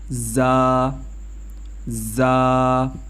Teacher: زبان کی نوک اور سامنے کے اوپر نیچے والے 4 دانتوں کے کنارے سے ادا ہوتے ہیں